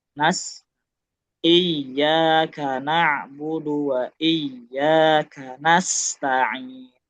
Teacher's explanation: sin ini sama-sama mengalir sempurna. Jadi kalau ngomong durasi dia harusnya lebih panjang.